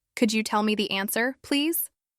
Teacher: Let your voice rise slightly on could you and then fall gently on please